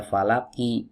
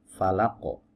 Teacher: Ya, asalnya bukan sukun, asalnya kasroh. Nah, huruf qaf saat dalam keadaan bersukun maka qalqalahnya akan nampak jelas